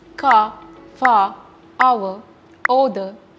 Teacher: Look at the words car, far, our, other. So these are words ending with R, but we are not pronouncing R.